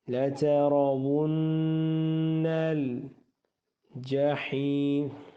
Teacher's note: نون کے اوپر شادہ ہے ہمیشہ گنہ